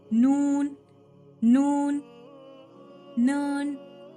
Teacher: तो मसोड़ों को लगे बाद ही नून आपका मखरज अदा होगा।